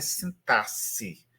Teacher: Mas a boa pronúncia é sintasse, como se fosse 2 S aí nesse X.